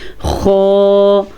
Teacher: جو نقطے والی خا ہوتی ہے اس کو حلق کے شروع والے حصے سے نکالا جاتا ہے